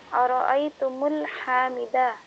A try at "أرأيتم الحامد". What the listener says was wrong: نو نو یہاں پہ میم کے اوپر سکون نہیں رہے گا کیونکہ حامد کے ساتھ الف لام نہیں ہے.